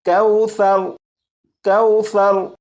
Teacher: سا کو نرمی سے پڑھیں گے، یعنی سیٹی کی آواز کے بغیر پڑھیں گے